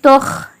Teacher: உருஃபே முஸ்தாலியா வல்லினமான எழுத்து. கல்கலா இல்லை, கல்கலா செய்யக்கூடாது